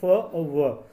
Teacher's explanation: दंतोष्ठ, फ यानी दांत और ओष्ठ, तो फ बोलोगे तो देखिए दांतों से टकराते हुई हवा होठों से निकलेगी, होठ ऊपर की तरफ खींचेंगे।